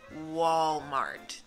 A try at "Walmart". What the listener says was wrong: Al final. Tienes que pronunciar la T.